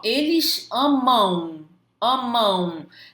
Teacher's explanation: Vocês perceberam que tem um U escondido ali atrás? O U tá assim, ó, atrás do M ali, ó, pronto pra puxar o teu tapete, mas você não vai cair nessa.